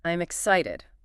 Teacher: your pitch needs to go up on the middle syllable, the "ci".